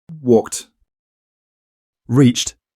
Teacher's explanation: you need to say the infinitive fully first, then add a voiceless T like in the word time